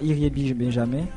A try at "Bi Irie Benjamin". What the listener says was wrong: Bonsoir, c'est pas Iriebi Benjamin, c'est Benjamin Irie ou bien Iriebi Irie Benjamin. Bi Irie Benjamin.